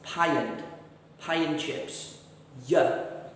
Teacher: the y has jumped into the middle to help us to connect these two words